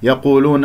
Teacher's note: القاف مفخمة مرتبة ثالثة